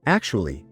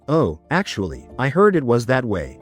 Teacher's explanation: With a strong rising tone, it can sound confrontational.